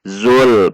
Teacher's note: perhatikan lam sukun tidak boleh memantul